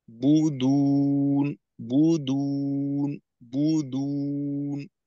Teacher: বু শেষ করার পর ঠোঁটটাকে একটু ছেড়ে দ্বিতীয়বার গোল করে দুয়ের উচ্চারণ করা।